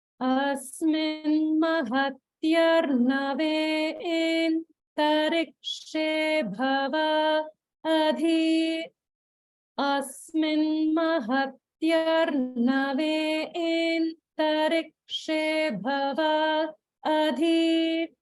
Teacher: notice the holding after bhava before adhi